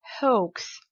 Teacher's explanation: non seulement en anglais, le H on le prononce, mais également le OA, c'est une diphtongue